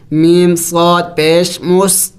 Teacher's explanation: آگے صاد سیٹی والے حروف میں سے ہے، پڑھتے وقت منہ سے سیٹی کی آواز نکلنی چاہیے